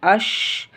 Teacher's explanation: तफशी का मतलब ये होता है कि शीन की आवाज़ जो है उसके मखरज में फैल जाए।